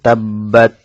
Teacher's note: তাশদিদ যুক্ত হরফ যেহেতু দুইবার উচ্চারণ হয় সে কারণে একটু সময় নেবে